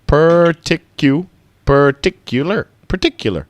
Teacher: the stress is on tick